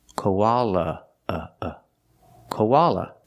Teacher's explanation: The A is pronounced with the short ah sound, like hot and stop, koa, koala. The last A is pronounced with the relaxed sound, like cup and up